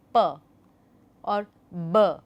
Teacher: When you say p or b, you see there is a complete closure of air flow at your lips. The upper lip and the lower lip, they are completely closed when this kind of a sound is produced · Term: stops